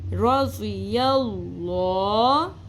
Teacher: یا زبر لام یل. اب کیونکہ لفظ اللہ کے لام سے پہلے زبر ہے تو ہم لفظ اللہ کا لام پر پڑھیں گے